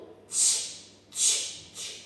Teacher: Цей звук складається із двох звуків: ть та щ. Для того, щоб їх правильно промовити, візьміть дзеркало або дайте діткам дзеркало. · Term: звук ч